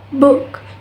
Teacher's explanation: Ooh. The tongue is mid-high, so it's slightly lower than sound oo, and the back part is raised, and the lips are rounded.